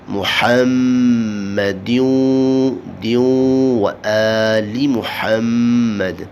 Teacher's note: ہا کو پڑھیں گے، وسط حلق سے نکالیں گے